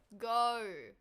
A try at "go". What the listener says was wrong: No, you're adding R's. at the end. Gar. Go. Try and like cut off your oxygen when you're pronouncing it.